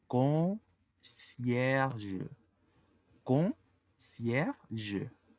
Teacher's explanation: La combinación de ON hacen una O gangosa u O nasal. La primer E, aunque no está acentuada, está antes de la R y la R es la última letra de la sílaba.